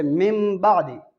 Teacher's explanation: نون ساکن یا نون تنوین کے بعد اگر با آ جائے، نون ساکن ادھر سے نون ساکن یا نون تنوین کے بعد اگر با آ جائے تو اقلاب ہوگا. با آ جائے تو اس کو میم سے بدل کر پڑھیں گے، اس کو اقلاب کہتے ہیں